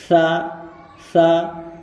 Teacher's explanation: जबान का किनारा ऊपर के दांतों के किनारों पर लगना चाहिए